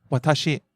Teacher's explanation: starts low and stays high. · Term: pitch accent